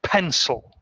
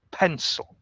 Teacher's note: the emphasis on the word now on the word pencil it's a two-syllable word and we stress the first syllable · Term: word stress